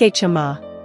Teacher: It's not a hard J like in jump, but a softer, slightly aspirated CH sound, like in church but without the T before it. Think a-JUM-ma.